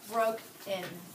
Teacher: the accent is on the first syllable, bro. Broken. That on the last syllable, in, I'm not putting my accent there. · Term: unaccented final syllables